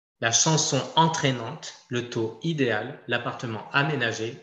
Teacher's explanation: là il n'y a pas de liaison possible du tout c'est une liaison impossible interdite